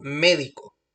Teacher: En las palabras esdrújulas, lleva la sílaba tónica en la antepenúltima sílaba